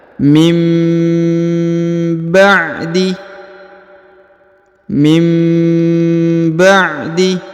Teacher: Jadi huruf nun sukunnya berubah menjadi mim ya karena sudah bertemu dengan huruf ba